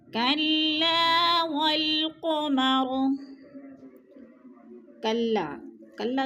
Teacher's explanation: الف خالی سے پہلے لام کے اوپر زبر ہے تو الف مدہ، الف مدہ کو ایک الف دو حرکات کے برابر ہم نے کھینچ کر پڑھنا ہے۔